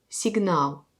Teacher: dans le mot signal, l'accent tombe sur A, c'est comme il y a deux A à côté